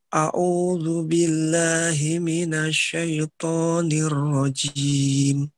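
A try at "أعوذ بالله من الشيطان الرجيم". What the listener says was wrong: jangan keluar kalau toknya. Ditaruh di belakang giginya. Tok. Syaitok. Tok. Jangan dikeluarin. ditempelkan di belakang gusi. Tempelkan di belakangnya. Tok. Tok. Syaitok.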